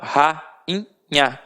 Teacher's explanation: rainha, o I não teve som de I, ele ficou nasalizado, então por isso não teve acento.